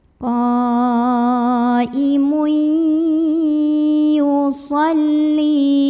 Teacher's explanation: Kalau ketemu ya, maka bunyi n-nya hilang, langsung ke ya, qaimui sambil dengung. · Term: idgham bi gunnah